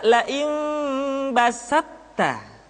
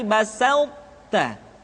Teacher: Tidak basatta tapi basauta. Sifat itbaq yang dimiliki oleh huruf to masih tetap ada, sehingga ketika mengucapkan to bertemu dengan ta, terdengar suara yang menebal